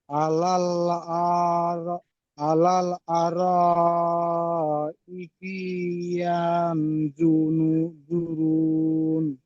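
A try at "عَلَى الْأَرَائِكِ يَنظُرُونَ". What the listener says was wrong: আলাল আর, ই কি বলেছেন? ই টান দিয়েছেন, টান হবে না। ই কি, হামজাদের ই, কাবদের কি।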